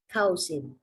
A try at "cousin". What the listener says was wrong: Bunyinya bukan cow. Ka. Ka. Zen. Cousin. Bacanya ini. Yes, jadi OU bunyinya A. Bukan cousin atau cousin.